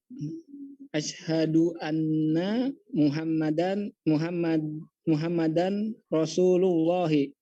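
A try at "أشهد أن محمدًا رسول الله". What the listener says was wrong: Ini tanwin bertemu dengan ro. Apa ini tanwin bertemu dengan ro? Apa hukum tajwidnya? Izhar atau idgham bigunna? bilagunna. Bilagunna atau bigunna? Bukan iklab, bukan. Iya, jadi tanwin nun sukun bertemu dengan tanwin bertemu dengan 4 huruf ya. Bertemu dengan 4 huruf yang kita bisa singkat dengan nama waya. Ya, nama waya gitu ya. Muhammadar.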